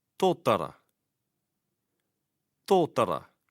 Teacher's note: The T is sounded with the tongue behind the front upper teeth.